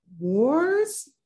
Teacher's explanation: lingering a bit on the R sound